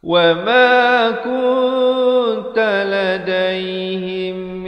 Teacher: Ikhfa itu maksudnya disembunyikan bunyi nun matinya di belakang ta dengan kadar dua harakat.